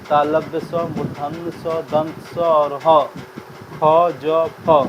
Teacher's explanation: संघर्षी, जिन व्यंजनों के उच्चारण में 2 उच्चारण अव्यय इतनी निकटता पर आ जाते हैं कि बीच का मार्ग छोटा हो जाता है, तब वायु उनसे घर्षण करती हुई निकलती है, ऐसे संघर्षी व्यंजन है।